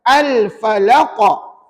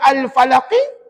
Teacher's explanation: boleh jadi baris bawah Dah peranuan kena tukar dia jadi mati bila mati maka dia melantunlah pada qaf tadi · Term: Qalqalah kubra